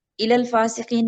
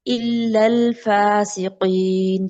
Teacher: لام کے اوپر شد کی وجہ سے اس کو ہم نے سختی کے ساتھ پڑھنا ہے لام کو